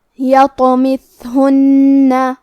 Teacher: کلمت یطمثہن میں تو پہ جزم ہے لہذا ہمیں تو کو قلقلہ سے پڑھنا ہے اور قلقلہ کا معنی ہے حرف ساکن کو ہلانا، تو ہم حرف الطو کو ہلاتے ہوئے یہ کلمہ کو پڑھیں گے